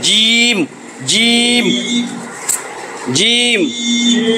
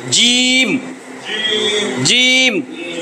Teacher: জিম বললে আমার জিহ্বার মধ্যভাগ তালুতে যায় লাগে, তাহলে বুঝবেন আপনার উচ্চারণ হয়েছে জিম, জিম, জিম।